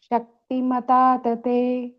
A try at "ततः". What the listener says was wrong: Tatah, put a ich sound.